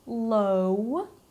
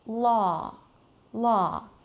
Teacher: although you have a W there, right, law, we do not round our lips to make a W sound. It is not low, all right?